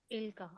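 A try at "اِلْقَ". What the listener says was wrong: इसको लंबा नहीं करना क्योंकि अब सिंगल जबर है ना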